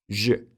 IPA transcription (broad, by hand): ʒ